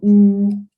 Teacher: Actually, this one, the high back would be the oo vowel. So ooh, the tongue moves towards the back of the oral tract, and also it's in the high position of the oral tract during the articulation of this vowel. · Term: high back vowel